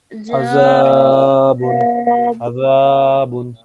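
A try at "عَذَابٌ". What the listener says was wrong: এই জালের উচ্চারণটা এখনো হচ্ছে না। যা জিবার আগা উপরের দাঁতের আগাতে স্পর্শ করবে, মাখরাজটা কোথায় আছে? আযাবুন আযা, জালের মাখরাজটা কোথায়? এই যে জালের মাখরাজ দেখেন, পাতলা আওয়াজ হবে।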